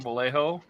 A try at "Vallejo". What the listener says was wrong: Like you're saying the J correctly, but not the L's.